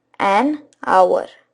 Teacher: we see that it begins with a consonant H but again when you listen to this word carefully you'll realize that H is not actually pronounced over here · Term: H over here is silent